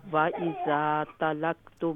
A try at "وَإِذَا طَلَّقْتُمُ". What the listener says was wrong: نہیں لام پہ تشدید. طَلَّقْتُمُ,